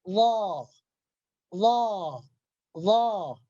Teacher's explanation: ketika kita membaca huruf Allah maka pangkal lidah kita akan terangkat ke atas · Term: huruf isti'la